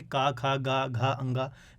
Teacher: इनका मतलब क्या है, का वर्ग जो है, इनको बोलने में जो आपकी वायु निकलती है वो कंठ से निकलती है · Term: कंठव्य